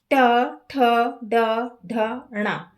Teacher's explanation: मूर्धा का मतलब है तालु के पीछे का ऊपरी भाग का पीछे वाला हिस्सा। जब बोलते समय जीभ मुड़कर ऊपर मूर्धा से लगती है तब जो वर्ण निकलते हैं उन्हें मूर्धन्य वर्ण कहते हैं। · बोल के देखें, ट ठ ड ढ ण, है ना, हमारी जो जीभ है वो मुड़ के ऊपर वाले हिस्से में लगती है ना, उसे मूर्धा कहते हैं।